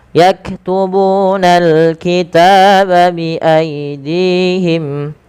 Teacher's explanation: panjangkan ta sepanjang 2 harakat karena dia ada alif kecil setelahnya. Bi aidihim, dihim, panjangkan dinya 2 harakat karena di sini ada ya kecil, teman-teman.